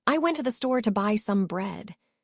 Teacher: The capitalized words are stressed and occur at roughly equal time intervals. The small words in between, to, the, some, are quick and weak. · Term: stress-timed language